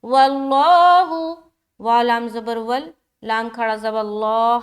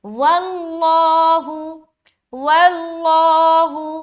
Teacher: لفظ اللہ کا لام موٹا کیونکہ یہاں پر واو کے اوپر زبر آ گیا